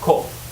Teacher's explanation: So this is a monosyllabic nominal, and it doesn't basically, it drops the palatal glide